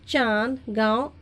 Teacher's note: अनुनासिक का उच्चारण करते समय वायु नाक और मुंह दोनों से निकलती हैं